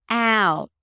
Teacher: The out sound is basically the a as in cat and then an uh and a t. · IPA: aʊt, æʊt